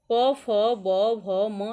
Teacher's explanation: इसका उच्चारण स्थान ओष्ठ है